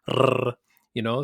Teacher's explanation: the Spanish trill, where you have to roll the R like "rrr," so that obviously requires a bit of practice to do, and some people have a really hard time doing the Spanish trill, and that's just one of many possible sounds that may not exist in your native language.